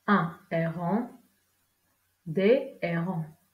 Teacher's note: ou un H aspiré. On ne peut pas faire la liaison.